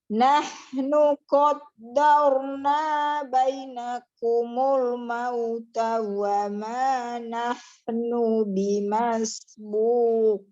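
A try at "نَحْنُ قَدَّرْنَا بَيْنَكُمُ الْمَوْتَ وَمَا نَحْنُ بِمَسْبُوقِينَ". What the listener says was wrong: Tadi di bainakum ya, diusahakan diturunkan dulu i-nya ya. Tidak lompat bainakumul, masih cepat, masih terbaca dengan cepat ya. sempurnakan dulu i, turunkan rahang bawahnya ya.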